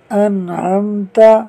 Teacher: نون ساکن کے بعد عین حروف حلقی میں سے ہے، لہٰذا اظہار ہوگا، یعنی نون ساکن میں غنہ نہیں ہوگا۔